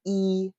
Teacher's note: we have a very low formant one and a very high formant two